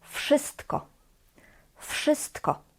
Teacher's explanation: Here the W, v, is also pronounced as f.